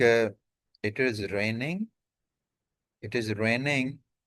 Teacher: Falling intonation, like it is raining, it is raining.